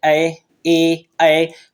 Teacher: ये कंठ तालव्य मींस कंठ और ताल दोनों से मिलकर निकलते ऐ ए ऐ मींस कंठ और ताल दोनों से ही निकलते